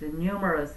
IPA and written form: |nu:mərəs (numerous)